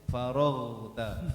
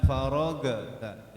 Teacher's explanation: untuk huruf ghain enggak boleh mantul ya. Faraghta. Jangan faragta, jangan mantul.